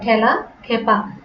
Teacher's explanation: একার যুক্ত একাক্ষর ধাতুর সঙ্গে আ প্রত্যয় যুক্ত হলে সাধারণত সে একারে কি হয়, এ হয় বিবৃত হয়